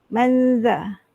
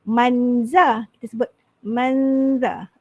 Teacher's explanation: za ni dia punya makhraj dia lidah kita ni keluar sedikit pada gigi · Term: makhraj huruf za